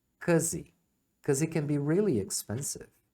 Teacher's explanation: Isso pode ser bem caro. Então, because é muito comum eles omitirem o começo aqui, o be. Então, você ouve só um cause.